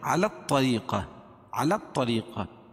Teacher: الف لام کے بعد حروف شمسی کے 14 حرفوں میں سے طا ہے تو یہاں لام نہیں پڑھی جائے گی، اس لام کو طا میں ملائیں گے